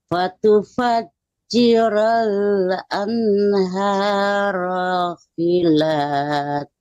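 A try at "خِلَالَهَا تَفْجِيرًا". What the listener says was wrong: Khila yang pertama panjang ya. Khilalaha tafjiro.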